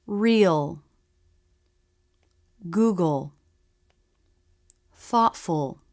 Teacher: speakers make the full dark L both parts all the time what's important is the dark sound make it with the back of the tongue